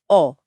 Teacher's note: कंठ और ओष्ठ। औ बोलते समय आवाज गले से तो आती है लेकिन साथ ही आपके दोनों होठ गोल हो जाते हैं। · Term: कंठोष्ठ दीर्घ स्वर